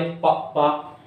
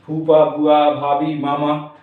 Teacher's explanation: और ए ओष्ठ वाले हो जाते हैं हमारे, ओष्ठ वाले पा पा, हम देखते हैं हमारे ओंठ टकरा रहे हैं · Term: ओष्ठ व्यंजन